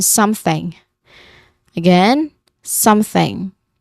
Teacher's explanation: That is a voiceless th sound where your throat does not vibrate when we try to say the sound.